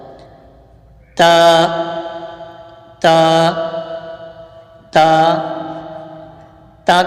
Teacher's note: जबान की नोक और ऊपर के दांतों की जड़ है यानी जबान की नोक जब ऊपर के दांतों की जड़ से लगती है तो फिर ता अदा होता है · ता का मखर जबान की नोक और ऊपर के दांतों की जड़ है यानी जबान की नोक जब ऊपर के दांतों की जड़ से